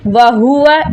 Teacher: اس ہا کو حلق کے سب سے نیچے والے حصے سے جو کہ سینے کی طرف سے نکلتا ہے وہاں سے پڑھا جائے گا